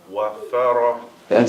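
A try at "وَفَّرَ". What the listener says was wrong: See, I'm not hearing the shadda. Wafara. Wafara. Yes, I need to be hearing the emphasis. You have to hold it and emphasize it. Wafara. You have to hold it, and that in the holding is the emphasis on it.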